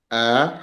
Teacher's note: A hamzah pangkal halqum nih yang dekat dengan tulang rangka dada nih.